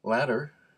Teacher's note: a sound that's in between and that's called the flap and the flap is not a t and it's not a d it's a in between